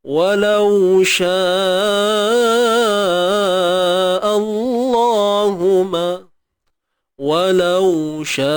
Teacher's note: Walau sya, walau au rakhawah. Ingat, suara mengalir.